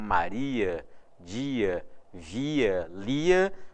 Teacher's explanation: se a palavra termina em ia, com esse som tônico como Maria, dia, via, lia, você tem o i e o a obrigatoriamente separados. Ou seja, você tem o fenômeno chamado hiato.